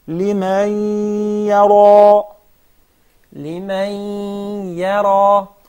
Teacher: the first ya will be muraqqaqa, but the ra and the ya will be mufakhama